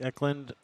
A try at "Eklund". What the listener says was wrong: Yep, Eklund. Eklund. Eklund with an A. It's with an U. Eklund.